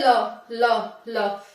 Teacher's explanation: हमारी जीभ जो मैंने बताया था ना मूर्धा होती है और हमारा तालु होता है, उससे टच होती है और हवा है वो बगल से निकल जाती है ल बोलने में, ठीक है। तो इस तरह से आपको ध्यान रखना है कि पार्श्विक व्यंजन वे होते हैं जिनके उच्चारण में वायु जीभ के बगल से निकल जाती है, ओके।